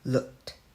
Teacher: ED sounds like t, just because the last alphabets of this word is voiceless.